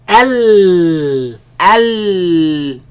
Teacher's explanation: The sound escapes on the sides. Al. Al. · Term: lam